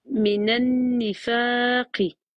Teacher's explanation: Faut que tu restes un peu plus sur le noun, vu que c'est deux temps.